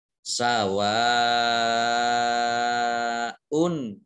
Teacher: ini satu kata maka Mad Thobi'i tersebut berubah menjadi madzip muttasil mad wajib muttasil dibaca panjang lima harokat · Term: mat wajib muttasil